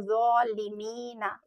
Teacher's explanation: इसी तरह जब ज़ौ हुरूफ आता है कुरान पाक में, तो ये ज़ालिमीना वर्ड अक्सर बहुत सी जगह आता है, तो हमें इस ज़ौ को हैवी पढ़ना है